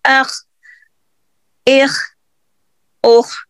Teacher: जो खा है ना, ये गले के इब्तिदाई हिस्से से अदा होता है